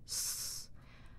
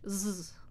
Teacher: The S is it voiced? No. The Z is voiced